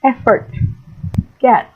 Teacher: And the mid-high, the sound is A, because it is articulated with the tongue in mid-position between high and low